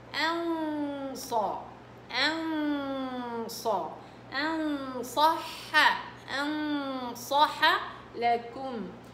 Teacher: فالنون مع الصاد غنة ايش؟ مفخمة